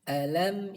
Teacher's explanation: di situ ada mim sukun bertemu dengan huruf ba cara membacanya suara mim sukun tersebut dibaca ikhfa yaitu antara izhar dan idgham sambil didengungkan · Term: Ikhfa Syafawi